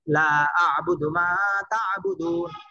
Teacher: এখানে লা টান দিতে হবে, টান না দিলে একবার অর্থ পুরাই পরিবর্তন হয়ে যাবে।